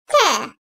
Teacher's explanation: Dil ucunun üst damağın ön tarafına değmesiyle dişlerin dibinden çıkarılır. İnce sesli ve kuvvetlidir.